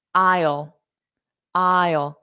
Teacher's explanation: So here, I, and then a dark L. So this AI is pronounced as I.